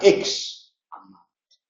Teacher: entendemos perfectamente una pronunciación donde se separa el prefijo porque quiere subrayar